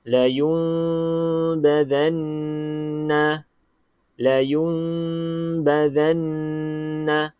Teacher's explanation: kita tukar dia kepada bunyi mim kepada bunyi Mim deat sini menukarkan bunyi nun mati menjadi huruf mim mati okey serta dengunglah dengung dua harakat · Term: iqlab